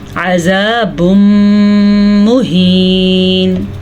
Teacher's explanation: تنوین کے بعد حروف یمون میں سے میم آیا ہوا ہے، تو اس لیے ہم یہاں پہ غنہ کریں گے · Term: ادغام بالغنہ